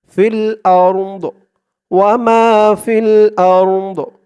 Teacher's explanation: দোয়াদের আওয়াজটা লাস্টে একটু ভাসবে,